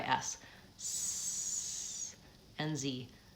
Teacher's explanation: the manner still noisy everything in my articulator stays the same the only difference is that I'm using my voice